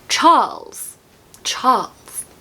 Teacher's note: if you want to say Charles in a very RP accent, don't pronounce the R and just elongate the A. So, Charles.